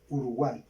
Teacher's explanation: la unión de tres vocales en una sola sílaba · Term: trip tongo